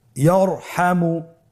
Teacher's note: তাহলে ইয়ারহামু, র সাকিন তার পূর্বে জবর আছে, র সাকিন তার পূর্বে যদি জবর থাকে অবশ্যই রকে পোর করে মোটা করে পড়তে হবে।